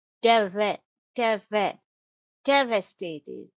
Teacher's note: the second syllable is schwa sound